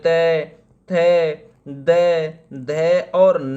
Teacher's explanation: त वर्ग को दंत की कैटेगरी में रखा जाता है